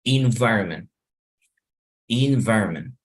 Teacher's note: lo que hago es desaparecer la última sílaba, hacerla tan débil